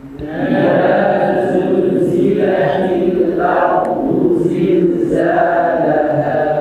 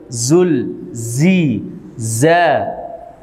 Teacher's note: Alirkan huruf zain karena zain memiliki sifat rokhwah.